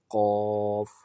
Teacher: زبان کی جڑ کو کوے کے متصل تالو پر لگا کر ادا کرنا، موٹا کر کے ادا کرنا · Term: قوف کا مخرج